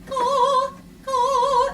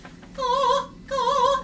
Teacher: you make the K with the back of your tongue and your soft palate, right? Don't need a lot of jaw.